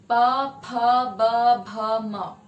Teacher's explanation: तो जिन ध्वनियों के उच्चारण में दोनों होठ आपस में टकराते हैं और वायु का प्रवाह निकलता है और ध्वनि उत्पन्न होती है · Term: बाइलेबियल